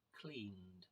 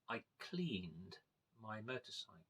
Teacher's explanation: the past tense of the verb to clean, cleaned, that is replaced by a D sound, like a single D